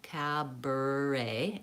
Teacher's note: The vowel in cabaret, the first vowel is vowel A, the black cat vowel, cabaret, and this middle vowel is purple bird, and then A, the last vowel is A, gray day, cabaret.